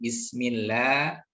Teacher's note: Di sini ada tarqiq pada huruf lam ya